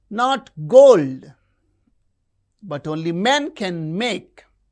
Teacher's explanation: You can see in this line gold men make. These words are stressed.